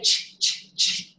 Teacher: Put your hand on your vocal cords and say, ch-ch-ch. Do your vocal cords vibrate? No.